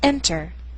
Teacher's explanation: the stress is on the first syllable not er